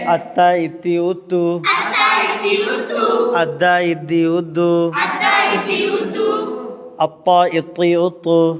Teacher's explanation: सनाउलिया की जड़ से ता दाल तौ अदा होते हैं और तौ मोटी होती है। · ता दाल तौ का मखरज, ज़ुबान की नोक, सनाउलिया की जड़ से। सनाया कहते हैं दो को, उलिया कहते हैं ऊपर, ऊपर के दो दांत।